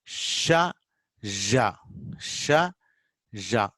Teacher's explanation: This is palatal, hard palate.